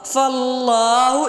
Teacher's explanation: لفظ اللہ کھڑا زبر کی وجہ سے لمبا ہو رہا ہے